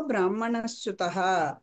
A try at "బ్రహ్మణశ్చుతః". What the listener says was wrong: బ్రాహ్మణ అంటున్నారు, బ్రాహ్మణ తేడా వచ్చేది. బ్రహ్మణ